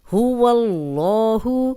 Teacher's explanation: اللہ کا لام پیچھے زبر ہے تو یہاں ہم اس کو موٹا پڑھیں گے، اللہ کا لام موٹا ہوگا۔